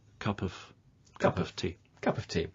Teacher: cup of tea may sound just as if it is one word and not four words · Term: linking